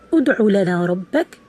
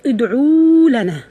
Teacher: Like instead of saying ud'u lana rabbak, which is only ayn, letter ayn with a vowel dhamma on it, you say ud'u lana. So you add a waw to the ayn, which is not of the word. We call this a clear mistake, adding a letter to the word which is not originally in the word.